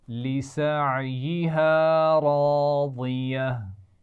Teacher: لسعیہا عین کے مخرج کا خیال رکھنا ہے. راضیہ را بھی موٹی پڑھیں گے اور ضاد بھی موٹا پڑھا جاتا ہے، اس کا خیال رکھنا ہے.